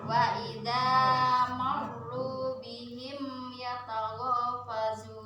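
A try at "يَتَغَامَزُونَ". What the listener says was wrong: Ya tahu mazun. Bukan fazun.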